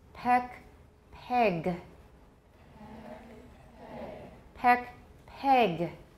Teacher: In this case, we're working with epsilon, eh, and it's getting closer to a.